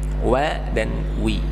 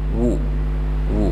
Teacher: ketika wa-nya berbaris kasroh ataupun fathah, maka dia harus ditarik seperti tersenyum, wa dan wi. Tapi ketika berharokat dhamma harus ditarik monyong, wu wu. Nah, seperti itu.